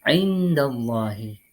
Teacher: Cara membacanya yakni dengan mendengungkan secara samar-samar yang disertai dengan dengung selama 2 ketukan. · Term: ikhfa harfi